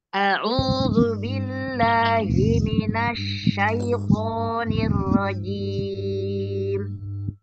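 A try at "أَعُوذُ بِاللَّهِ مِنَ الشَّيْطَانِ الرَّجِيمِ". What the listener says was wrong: ar-rajim ro-nya tebal kan ar-ro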